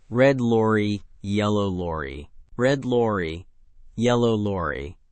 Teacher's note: This one is famously difficult even for native speakers because it forces rapid switching between the floating R position and the touching L position.